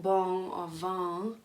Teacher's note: there's a nasalized sound at the end of the mantra